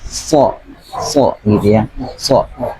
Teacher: pengucapan huruf sha itu agak lebih nempel langit-langit atas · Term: huruf shad